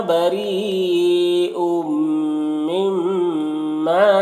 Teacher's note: وَأَنَا، یہاں پر یہ انا کا الف کو نہیں پڑھا جاتا ہے، یعنی اس کو کھینچ کے نہیں پڑھنا ہے. یہاں پر را کے نیچے زیر را کو باریک پڑھیں گے